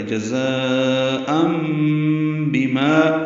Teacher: تنوین کے بعد با آنے کی وجہ سے اقلاب ہے، ان کی جگہ ام پڑھیں گے